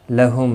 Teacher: لہم میم ساکن کے بعد پھا ہے، ظاہر شفوی ہوگا